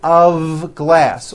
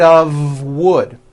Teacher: it's not a f wood with an unvoiced F it's all voiced and it's all connected